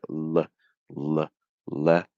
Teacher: And that's because that first L, very often people use a light L with the tip of the tongue right there touching against your alveolar ridge, the top of your mouth